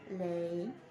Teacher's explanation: Now, this diphthong begins with the same E as in get and man. The sound then glides from a relatively more open to a more closed vowel position.